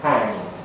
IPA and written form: hæŋ (hang)